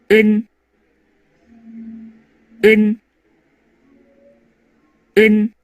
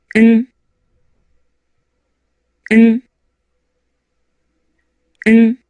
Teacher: 세 소리 모두 비강의 공명이 느껴지죠? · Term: 비음